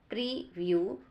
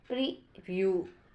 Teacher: examples of paradigmatic relations in stress pattern word preview noun preview stress on the first syllables